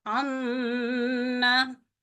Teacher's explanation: नाक से आवाज जारी करेंगे, नाक के बांसे से हमारी आवाज जारी होगी, यानी मुंह से आवाज नहीं निकलती है, नाक से आवाज निकलती है और जो जबान है वो तालू के ऊपर चिपक जाती है। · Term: गुन्ना